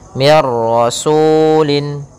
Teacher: nun sukun bertemu dengan ro maka suara nunnya langsung hilang langsung kepada huruf ra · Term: idgham bila gunnah